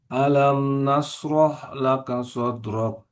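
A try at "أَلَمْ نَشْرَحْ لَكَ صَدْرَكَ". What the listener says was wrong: Ah, alam nashrah laka sadrak. Shinnya harus beda dengan sod. Alam nash. Alam nashrah laka sadrak.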